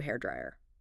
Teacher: The stress on the first syllable of dryer was perfect.